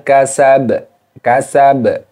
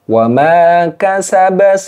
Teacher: jadi hurufnya hidup dan dibaca wakaf maka sukunkan kemudian dipantulkan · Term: Qalqalah Kubro